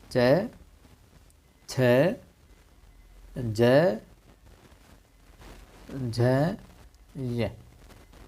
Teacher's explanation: चय वर्ग पूरा है, चय, छ, जय, झ, ये पांचों के पांचों जो है अपने तालव्य के अंदर आ जाएंगे